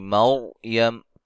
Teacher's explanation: را کو موٹا کریں گے، را ساکن سے پہلے زبر ہے